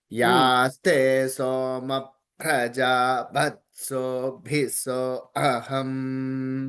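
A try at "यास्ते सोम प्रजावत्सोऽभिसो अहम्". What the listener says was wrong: అంతే, కరెక్ట్.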